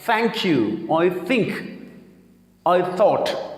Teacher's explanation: زبان کی نوک کو آپ نے اوپر والے دانتوں کے ساتھ آپ نے رب کرنا ہے، اس کے ساتھ ملانا نہیں ہے.